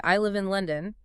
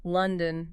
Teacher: Falling intonation, it's a really common one. Basically, your voice starts on maybe a slightly higher pitch, and then it drops down right at the end of the phrase or sentence. Drops down at the end.